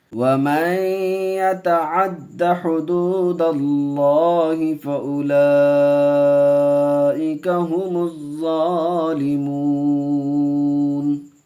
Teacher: میم کو زا سے ملائیں گے، الف لام سیلنٹ میں رہے گا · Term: حروف شمسی کا قاعدہ